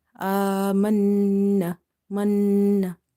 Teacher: Noon is having nasalization because of the shadda on the top. So we will hold the sound and then we will drop it.